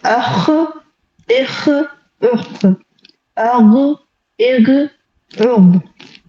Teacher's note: اینڈ پھر آتے ہیں حلق والے حرف. تو جو ٹاپ آف دا تھروٹ ہوگا تو اس سے جو حرف کی ادائیگی ہوتی ہے وہ ہے خا اور غین